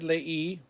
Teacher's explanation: leí with an accent on the I. We're breaking up a diphthong there.